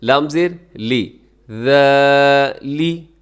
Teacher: لام کے نیچے زیر, اسے آپ نے لمبا نہیں کرنا. زیر زبر پیش لمبا نہیں کرنا.